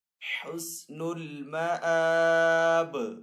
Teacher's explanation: हमजा के ऊपर यहाँ पे खड़ा जबर है तो हमजा को एक अलिफ 2 हरकत के बराबर खींचकर अदा करेंगे। यहाँ पे वफ़ ताम की अलामत है।